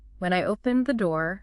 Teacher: Your voice goes up, holds, and the listener expects more. If you said, when I opened the door, falling, it sounds like that's the end of the story. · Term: rising intonation